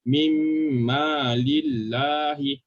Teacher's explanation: Jangan baca huruf nun dah. Terus lompat ke huruf mim.